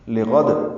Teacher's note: لام کو جلدی ادا کریں گے، غین کو پر پڑھیں گے، وقفاً دال ساکن پہ قلقلہ ہوگا